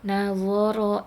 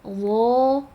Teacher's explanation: Pangkal lidah tidak naik kalau yang nador, tapi kalau nado dho itu pangkal lidah naik. Do. Pangkal lidah naik itu terdengarnya seperti kayak tercekat gitu ee apa terdengarnya.